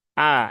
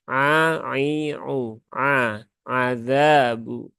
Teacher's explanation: Ya, ini saya mute dulu ya biar tidak mengganggu yang lain. Azabu ya huruf ainnya jangan sampai tertukar menjadi hamzah